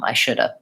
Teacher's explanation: it's basically that V drops off because going between the D and the V is challenging even for native speakers